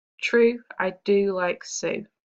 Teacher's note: you can hear that the vowel sound is repeated, that oo sound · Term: assonance